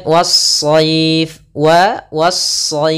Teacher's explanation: ada alif lam yang kita tulis tapi kita tidak baca, sehingga langsung kita idghamkan ke huruf shad